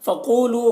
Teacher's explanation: क़ाफ़ को पुर पढ़ेंगे, क़ाफ़ हुरूफ मुस्तालिया में से है